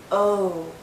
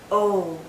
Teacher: This is another long vowel sound. O. Our lips are very rounded, but it's more open. O. Think of the letter O.